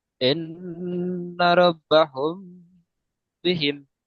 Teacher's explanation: মিম সাকিনের পরে বা এসেছে, তাই মিমকে এক আলিফ পরিমাণ গুণনা করে পড়তে হবে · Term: ইকফায়ে সাফাবি